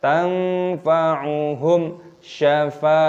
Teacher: mim sukun bertemu dengan huruf shin, idhar syafawi dibaca jelas, tidak boleh didengungkan. Tangfa'uhum syafa, tidak boleh, harus dibaca jelas.